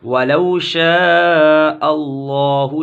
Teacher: لفظ اللہ کو لام کو پر پڑھیں گے، موٹا پڑھیں گے،